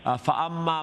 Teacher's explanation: The meme has a akmal gunna because of the tashdid and it's double sound, double letter.